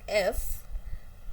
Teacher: So, in for "f", it's voiceless because no vibration of vocal cords. But, it's labiodental fricative because the teeth, lower part of the teeth, touches the upper lip. So, there there are involvement of both lip and teeth. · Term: voiceless labiodental fricative